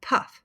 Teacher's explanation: It's more aspirated, meaning that there's a puff of air coming after a P